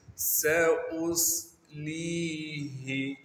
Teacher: سین کی آواز کو صاف کر کے یعنی سیٹی نکال کر پڑھیں گے اور سین کو باریک کر کے پڑھیں گے۔ حمزہ کو صاد سے ملائیں گے کیونکہ صاد ساکن ہے، اور صاد کو موٹا کر کے پڑھیں گے کیونکہ صاد موٹے حروف میں سے ہے۔